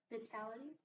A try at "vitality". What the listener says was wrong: This I here is not a short I. It's a long I. Vitality.